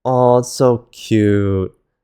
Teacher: We've had high flat, mid flat, and now we have low flat. Low like this, at the lower end of your natural pitch range. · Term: sixth tone